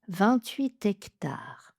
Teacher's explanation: on va prononcer le T et faire l'enchaînement 28 hectares, comme si c'était un mot qui commençait par une voyelle.